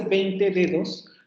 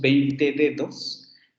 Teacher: nosotros esas dos Ds, cuando decimos 20 dedos, esas dos Ds se pronuncian como fricativas